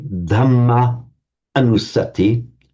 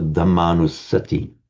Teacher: you merge those two short as into one long, so Dhammanusati.